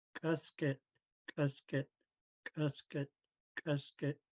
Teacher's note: we put the middle of your tongue against the roof of your mouth, blocking off the airflow and kicking the K out. So, like it says, middle of your tongue against the roof of your mouth. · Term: pinch K